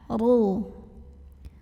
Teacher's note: dengan izhar qomari dibunyikan secara tafkhim sebab RO nya berbaris lemah cara membacanya ditebalkan huruf RO nya pangkal lidah kita angkat